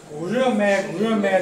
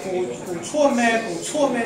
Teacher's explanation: 这个春字发出来太累了，就变成古热咩，就把它模糊掉了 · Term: 弱化了，连读了